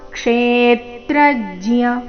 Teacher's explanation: ಕ್ಷೇತ್ರಜ್ಞ ಮೊದಲನೇ ಎರಡು ಅಕ್ಷರಗಳ ಮೇಲೆ ಆಘಾತ.